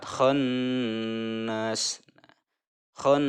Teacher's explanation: Cara membacanya itu harus mendengung dan menahan 2 sampai 3 harokat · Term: gunnah